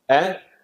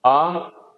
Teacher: ह्रस्व स्वर में कम समय लगता है और ह्रस्व से जो दुगना समय लगता है वो दीर्घ में लगता है